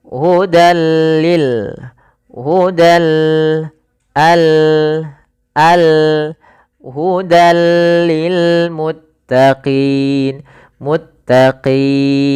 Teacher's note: Maka awalnya hudan bertemu dengan lam maka dimasukkan ke huruf lam. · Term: idgham bila ghunah